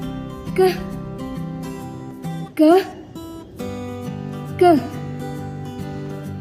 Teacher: Huruf selanjutnya yaitu K. K merupakan hambat tak bersuara.